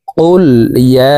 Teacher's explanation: ইয়া এখানে 3 আলিফ টান, কারণ মদের হরফের উপরে চিকন চিহ্ন, বামে হামজা, মধ্যে মুনফাসিল, 3 আলিফ টানিয়া পড়িতে হয়।